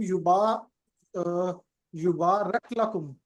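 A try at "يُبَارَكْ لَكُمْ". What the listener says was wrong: हाँ, युबार राकू नहीं है, युबार रख है।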